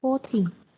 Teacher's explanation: pronounce teen with long, strong N sound at the end, so that we know you say teen and not T. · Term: strong letter N